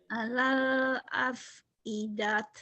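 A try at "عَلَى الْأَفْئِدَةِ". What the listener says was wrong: Alal afidah. Tak marbutoh berubah jadi ha. Alal afidah.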